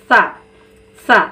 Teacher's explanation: سا میں ہماری زبان کی نوک سامنے والے دانتوں کے کنارے سے لگتی ہے اور اس کو نرمی سے پڑھنا ہے، سیٹی کی آواز بالکل نہیں نکالنا ہے